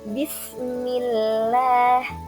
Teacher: huruf lam pada lafaz Allah dibaca tipis itu apabila berada setelah harakat kasrah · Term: lam jalalah